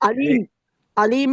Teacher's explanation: علیم میں یا مدہ ہے، اور اس میں دو حرکت کریں گے، اور مد اصلی ہے، اور میم کے اوپر جو ہے میم کے اوپر جو تنوین ہے اس کے بعد با ہے تو یہاں پہ اقلاب ہوگا، اس میں بھی دو حرکت غنہ کریں گے۔